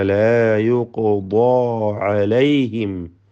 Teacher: അലൈഹിം സക്കിന മീം ഇൽഹാർ ഷഫവി മണിക്കാതെ വെളിവാക്കണം